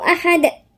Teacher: أحد في قلقلة عند الدال